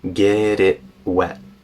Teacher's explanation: T in it turns into a global stop get it wet now I'm saying get it wet using a glottal stop there